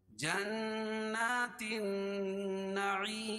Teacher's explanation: تا کو نون میں ملائیں گے اور یہ لام نہیں پڑھی جا رہی ہے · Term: حروف شمسیہ